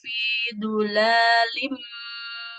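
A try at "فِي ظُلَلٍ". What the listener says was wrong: Fi zulalim. Nggak ada yang panjang. Fi zulalim. Lamnya nggak boleh panjang, Ibu.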